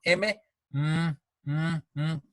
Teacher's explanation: boca cerrada y el aire sale por la nariz. Esta es la característica de los sonidos nasales.